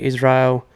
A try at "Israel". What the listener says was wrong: That's better but you kind you're like going so hard on the a